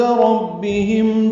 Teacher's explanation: ربهم میم ساکن پہ اظہار شفوی ہے